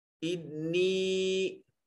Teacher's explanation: انی میں نون مشدد ہے، غنہ واجب ہوگا، آواز کو ناک کے نتنوں میں لے جا کر گنگنانا غنہ کہلاتا ہے